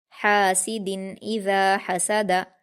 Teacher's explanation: हा पर अलिफ मद्दा है 2 हरकत खींचकर हलक से अदा करेंगे